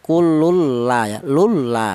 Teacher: idghamnya itu bila gunah tanpa ada suara berdengung ya. Kululla nggak boleh, kululla tidak boleh ya. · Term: idgham bila gunah